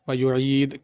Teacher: ویعید کی دال پہ بھی قلقلہ ہوگا